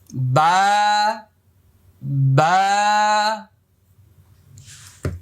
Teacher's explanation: বা এক আলিফ পরিমাণ লম্বা হবে, মুখটা খালি ফাঁকা হবে